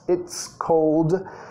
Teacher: It's, con el it's, tienes que asegurar que estás pegando la T, sonido T y la S